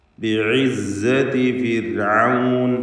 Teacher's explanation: ഫിർഔൻ എന്ന പദത്തിൽ റായിന് തർക്കീഖ് നേർപ്പിച്ചുകൊണ്ട് റായിന് ഉച്ചരിക്കണം. റായിന് സുക്കൂനാണ്.